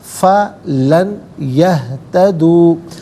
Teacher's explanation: نون ساکن کو یا کے ساتھ ملا کر یا کی آواز کو غنّے کے ساتھ ادا کریں گے۔ یرملون کا قاعدہ یہاں پر اپلائی ہوگا، فَلَن يَهْتَدُوا، یہتدو میں